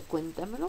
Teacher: la sílaba que lleve el acento es la antes de la antepenúltima es una palabra sobreesdrújula